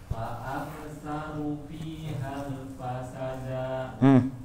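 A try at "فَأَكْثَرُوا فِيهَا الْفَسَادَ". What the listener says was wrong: Ru-nya kurang panjang, da-nya jangan panjang. Tapi sa-nya panjang. Iya, da-nya yang nggak boleh panjang, sa-nya panjang.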